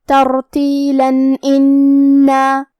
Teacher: آخری میں لام پہ تنوین زبر ہے، اگر ہم یہ آیت کو اگلی آیت کے ساتھ ملا کے پڑھے تو حرف الالف کلمت انا دوسرے والی آیت میں حروف الاظہار میں سے ہے، اور اظہار کا معنی ہے ظاہر کرنا، اور تنوین کی اصلیت نون ساکن ہے تو ہم یہاں تنوین ظاہر کریں گے اور اسے نون ساکن پڑھیں گے اور بغیر غنہ سے یہ حکم کو ادا کریں گے